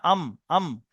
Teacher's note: 15 নম্বর মাখরাজ, দুই ঠোঁটের শুকনো অংশ থেকে মিলিত হয়ে উচ্চারণ হয়